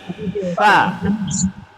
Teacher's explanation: Daripada bibir asyafatani, huruf yang berangin fa. Ada angin. Fa.